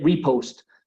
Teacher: siempre el acento, la sílaba tónica la pongo en la primera parte, en el re